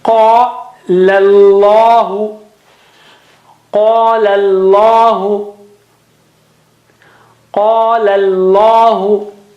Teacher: Qala is thin. Qala, and then lam of word Allah is thick again.